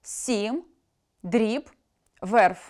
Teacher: Губні [б], [п], [в], [м], [ф] у кінці слова потрібно вимовляти твердо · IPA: [с’ім], [др’іб], [верф]